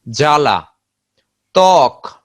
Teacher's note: শব্দের শুরুতে যদি ব ফলা থাকে তাহলে এই ব ফলার উচ্চারণ হয় না